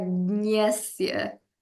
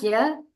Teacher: it's kind of like G and Y A, but like at the back of your nose